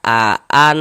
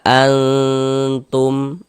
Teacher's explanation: Jangan kita baca aan jelas begitu, aan jelas begitu, jangan, tapi disamarkan. Bunyi nun sukun atau bunyi tanwinnya disamarkan. Karena di sini yang kita temui nun sukun, berarti bunyi nun sukunnya kita samarkan. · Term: ikhfa hakiki